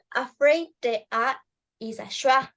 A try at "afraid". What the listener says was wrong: No, there is not a schwa there. There is not schwa. It's a diphthong. In the diphthong.